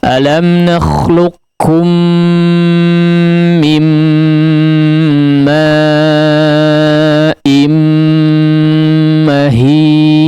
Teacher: gunnah pada 3 huruf mim yang bertanda tasydid, ya. Semuanya digunnahkan dengan gunnah yang panjang